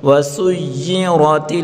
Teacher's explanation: وسيرت مشدد حرف کو ہمیشہ سکتی کے ساتھ پڑھیں گے. وسيرت را کے اوپر زبر ہے، را کو پر پڑھیں گے. وسيرت تا کو لام کے ساتھ ملا کر پڑھیں گے.